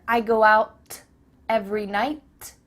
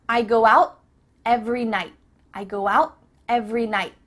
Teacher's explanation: your tongue is at the top of your mouth you're about to make the T sound but no air goes through so it's just stopped at the top of your mouth I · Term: cut off the T